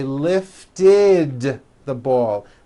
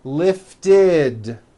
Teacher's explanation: If a word ends in a t or a d sound, we add the ending it, which is a vowel i followed by a d, which is voiced.